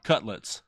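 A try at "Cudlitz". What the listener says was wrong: It's a C-U-D. Like cud. Cudlets.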